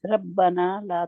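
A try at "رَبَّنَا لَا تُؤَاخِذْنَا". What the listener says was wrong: را کو موٹا کریں. نہ ربنا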